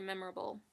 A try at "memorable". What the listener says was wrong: Memorable, yeah. Memorable. You're just adding like 5,000 other syllables in there.